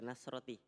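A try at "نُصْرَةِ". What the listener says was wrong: Nusroti. Itu tadi. Ini baca lagi Nasro. Sudah bilang harokati al-muskil. Kan bisa nasro, bisa nusro. Oh ternyata dibaca nusro.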